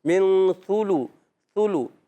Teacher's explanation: سا پر پیش، لام پر پیش حرکت، یعنی پیش کی حرکت، ہونٹ گول ہو جائیں گے